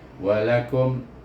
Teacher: Kita kalau baca walakum, terus tutup bibir kerana izzah syafawi, sebab mim mati, ni huruf bibir. Walakum, dia mati dengan makhraj yang terakhir huruf itu.